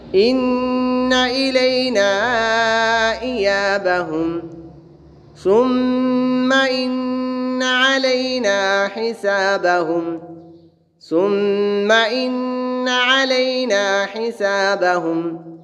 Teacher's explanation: میم مشدد اور نون مشدد ہمیشہ غنہ ہوتے ہیں